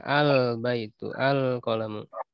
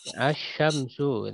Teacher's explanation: Kalau alif lam komariah, lamnya kan dibaca al baitu, al qalamu. Kalau yang alif lam syamsiah, lamnya tidak dibaca. Asyamsu, langsung ke huruf berikutnya kan.